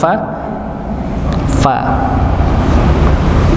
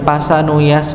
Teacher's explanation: bibir bawah bertemu dengan gigi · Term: huruf fa